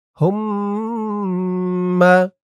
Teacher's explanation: হুম্মা, হা দিয়ে মিম ধরবে, এখানে ওয়াজিব গুন্নাহ। হরকতের পরে মিমের উপর তাসদীদ।